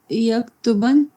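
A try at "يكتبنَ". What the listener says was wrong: نہیں last letter ساکن، نہ نون سے پہلے والا ساکن،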